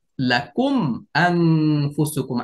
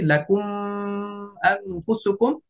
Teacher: সর্বশেষ যে উদাহরণ, লাকুম শব্দের শেষ হরফে মিম সাকিন আসছে, সর্বশেষ মিম সাকিনের পরে যখন অন্য কোনো হরফ আসে, যেরকম হামজা আসছে এখানে লাকুম আনফুসুকুম, মিম সাকিন আসছে প্রথম শব্দের শেষ হরফে, দ্বিতীয় শব্দের শুরুতে হামজা আসছে, এই জন্য গুন্না ছাড়া স্পষ্ট পড়বো